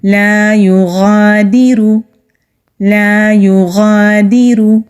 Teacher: غین مستعلیہ حروف میں سے ہے، یعنی کہ موٹے حروف میں سے ہے تو موٹا پڑھیں گے۔ جو حلق کا منہ کی طرف والا حصہ ہے وہاں سے غین ادا ہوتا ہے۔ را کو موٹا پڑھیں گے کیونکہ را کے اوپر پیش ہے۔